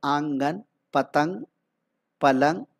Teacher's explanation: نون غنہ، اس کی آواز ناک سے نکلتی ہے